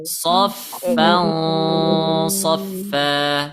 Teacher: Ketika dia ikhfa, maka sifat huruf shad itu aslinya tebal. So, maka dengungnya atau engnya harus tebal.